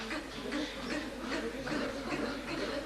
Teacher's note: И смыкается корень языка с гортанью.